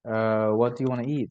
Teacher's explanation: So we stress on the word eat because that's new information.